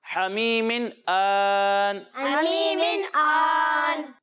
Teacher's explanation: ناک میں آواز نہیں جائے گی